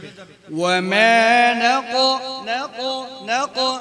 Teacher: কফ হরফ উচ্চারণের সময় জিহ্বার গোড়া উপরের দিকে কি চলে যাবে। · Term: কফ ইস্তিআলা